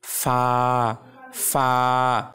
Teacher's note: ফা এর উচ্চারণের সময় যখন দাঁত ঠোঁটের সাথে লাগবে তখন হালকা বাতাস বের হবে · উপরের সামনের দুটো দাঁত মানে উপরের যে দুইটা দাঁত আছে সামনের সেই দুইটা দাঁত এবং নিচের ঠোঁটের ভেজা অংশকে লাগিয়ে আলতো করে উচ্চারণ হবে ফা এটি টানে টেনে উচ্চারণ করতে হবে তো আরবি হরফ সবগুলি